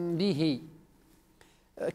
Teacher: باخفاء الميم اخفاء الشفوي مع الباء